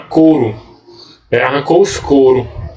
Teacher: na fala, na linguagem falada, a gente não pronuncia o U. Né? A semivogal U ela é suprimida.